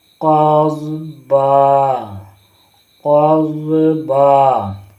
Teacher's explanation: اور جب وقف کریں گے تو یہاں سے تنوین میں سے ایک حرکت گر جائے گا اور ایک حرکت رہے گا. قضبا، قضبا.